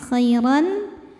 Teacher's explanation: Ada hukum izhar halqi, sebab ada tanwin fathah yang menghadapi huruf halqi atau huruf tenggorokan yaitu hamzah, maka tanwin ini kita bunyikan dengan jelas. Jadi bunyinya masih bunyi N ya, khairan, dan tidak perlu ditahan.